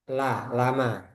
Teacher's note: Huruf lam keluar dari sisi hingga ujung lidah bertemu gusi atas. Sisi hingga ujung lidah gusi atas.